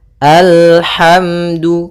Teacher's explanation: Kemudian al hati-hati dalam lafal lam sempurnakan makhraj daripada lam ujung lidah naik apa? Melekat dengan langit-langit atas ya.